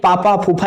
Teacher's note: ओठ आपके दोनों सट रही हैं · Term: पा वर्ग